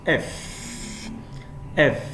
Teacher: My upper teeth is touching my lower lip. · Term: fricative sound